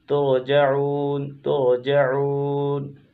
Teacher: ترجعون رائے ساکنہ سے پہلے پیش ہے تو را کو پر پڑھیں گے